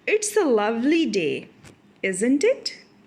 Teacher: So there is falling intonation because I want agreement from the next person whom I am talking to.